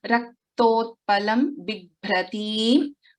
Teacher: Bibhratim, Bha is a Mahaprana.